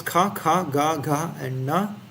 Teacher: the back of the mouth at the top of the throat the breath becomes blocked by the very back of the tongue to produce the gutal sounds